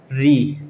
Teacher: जब आप उच्चारण करेंगे री का, री, तो जो जीभ का अगला हिस्सा है वह ऊपर छत पे टकरा करके नीचे आएगा एकदम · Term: मूर्धन्य स्वर